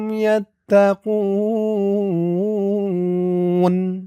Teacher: এখানে অক্ফ করার কারণে পেশের পরে ওয়াও সাকিন এক আলিফ টানটা ৩ আলিফ হয়ে গেছে। উ বলে ৩ আলিফ টান দিয়ে এই নুনকে ধরতে হবে।